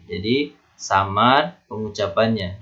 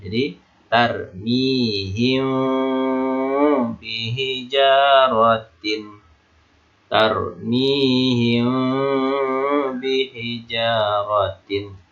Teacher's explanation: Jadi pengucapan mim nampak samar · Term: ikhfa safawi